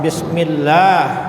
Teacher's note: Allah itu dibaca tipis panjangnya adalah dua harakat · Jadi baca bismillah itu Allah itu dibaca tipis, panjangnya adalah 2 harakat bismillah. Jadi kalau bismillah itu artinya 2 harakat. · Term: tarkik